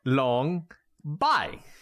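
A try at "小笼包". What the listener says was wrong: Bao. Definitely not bai. Bao. Xiaolong Bao. Xiaolong Bao.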